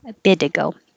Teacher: little bit ago the t changes to a d